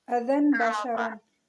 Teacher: دو زبر کی تنوین کے بعد اقلاب کا پا آ رہا ہے تو ہم اس کو میم المخفی میں کنورٹ کر کے پڑھیں گے